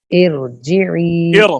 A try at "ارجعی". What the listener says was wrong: ایرو را کو ادائیگی میں زبان کو ڈھیلا چھوڑیں. را کے اوپر محنت کریں ذرا، آپ کی را پور نہیں ہوتی.